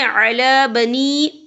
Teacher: یہ دیکھیں علی بنی، یہاں پہ یا مدہ ہو رہا ہے، یا ساکن ہے، یا ساکن سے پہلے زیر ہے اور اس پہ چھوٹی سی مد بھی ہے، تو ہم یہاں 3 یا 4 حرکت کے برابر کھینچیں گے